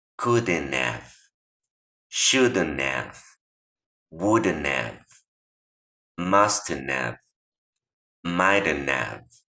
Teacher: es una E neutral, no tan abierta como la del español. Es simplemente para hacer la transición entre el sonido de la D y la N.